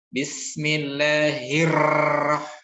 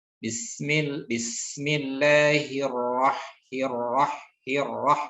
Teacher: Tetap dia betul-betul ditekan, tetapi getarannya tidak dikuatkan sebagaimana ejaan huruf R yang double pada bahasa kita ya. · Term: sifat takrir